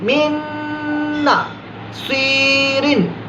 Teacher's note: من نا تالو سے زبان ہماری لگ گئی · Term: ادغام کا غنہ